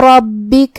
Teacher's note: کلمت ربک میں یہاں را پہ زبر ہے تو را کا حکم ہے تفخیم، ہمیں را کو موٹی آواز میں ادا کرنا ہے. پھر با پہ تشدید ہے لہذا دو حرف کے برابر ہم حرف البا کو پڑھیں گے